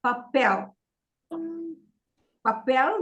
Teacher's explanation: papel is stressed on the second syllable because it ends with an L.